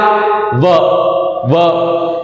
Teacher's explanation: तो व जब बोल रहे हैं हम, तो ये होठ जो है वो हमारे दांत के टच होकर के फिर बोला जा रहा है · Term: दंतोष्ठ्य